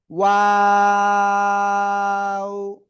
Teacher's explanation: 2 ঠোঁট শুরুতে গোল হবে, মাঝখানে 2 দিকে প্রসারিত হবে, শেষে এসে আবার গোল হবে।